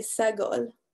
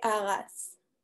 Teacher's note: The segol, which we usually hear pronounced e, is pronounced as an a